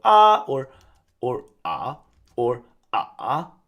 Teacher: And then we'll either pronounce it like ah and then you'll have to change tones in the middle of this a sound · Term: roller coaster